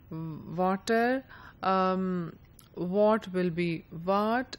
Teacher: no distinction is made between the v and the w sound